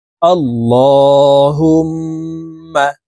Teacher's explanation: করতে হবে কারণ আল্লাহ শব্দের আগের হরফে জবর অথবা পেশ হইলে এই লামকে ল অর্থাৎ মোটা করিয়া পড়িতে হয়